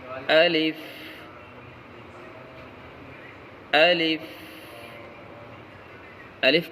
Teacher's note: الف کا مخرج جوف دہن یعنی منہ کا خالی حصہ